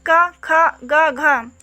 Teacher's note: का वर्ग के अंतर्गत का, ख, ग, घ, इनका जो उच्चारण स्थान होगा वो कंठ होगा